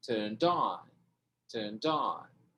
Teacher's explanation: O D passa para frente, vira turned on.